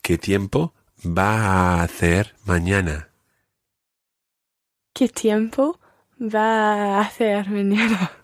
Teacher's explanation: You can run all your a sounds together there.